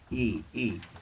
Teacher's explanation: E is a closed, we say closed vowel.